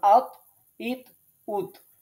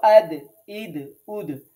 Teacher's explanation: জিহ্বার আগা সামনের যে উপরের দুই দাঁতের গোড়ার সাথে লাগাইতে হবে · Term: তোয়া দাল তা